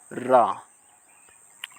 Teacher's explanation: जीभ तालू से लुढ़क कर स्पर्श करें इसे हम र को लुंठित पुर्ण कहते हैं रा उसके बाद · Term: लुंठित वर्ण